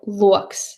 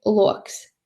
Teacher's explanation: first one is level tone or stieptā intonācija, high throughout the syllable. So loks, spring onion, loks.